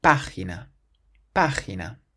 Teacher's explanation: Emphasizing that first syllable. Página. The word for electronic has an accent on the O in the middle of the word, so we say electrónico.